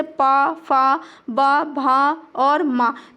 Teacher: आपके दोनों ओठ टच करते हैं आपस में इनका प्रोनाउंशिएट करते समय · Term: ओष्ठ